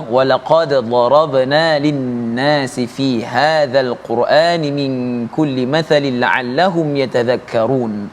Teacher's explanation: Ya, kalau kita lihat huruf dal ini bila mati, bila sukun, kita perlu bacanya dengan qalqalah. Ada letupan pada huruf dal yang mati.